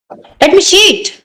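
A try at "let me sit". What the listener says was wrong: सीट नहीं, सिट। सिट। लेट मी सिट।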